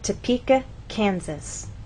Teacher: we stress the middle part of the word, Topeka, and here the first part, Kansas. It's important to know where to place that stress because if it's moved to the incorrect place, other vowel sounds change. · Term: word stress